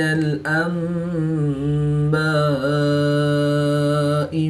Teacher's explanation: الف مدہ کے بعد حمزہ اسی کلمے میں ہے تو یہاں پر مد متصل ہوگی، 3 سے 5 الف تک کھینچ کر پڑھیں گے۔ · نون ساکن کے بعد حرف با ہے تو یہاں پر اقلاب ہوگا، نون ساکن کو میم سے بدل کر غنہ زمانی کر کے پڑھیں گے